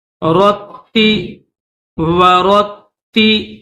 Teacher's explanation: تا کے اوپر تین دندان ہیں یعنی تشدید ہے، تو تا کو دبا کر اور سختی کے ساتھ پڑھیں گے